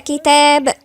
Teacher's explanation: التاء مرققة والألف مرققة، يبقى كتاب.